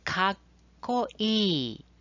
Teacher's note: notice the short pause between the ka and ko sounds. This is called a double consonant.